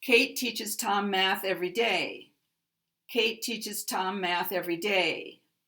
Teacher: All these words are stressed words, but 'day' is going to get the maximum stress.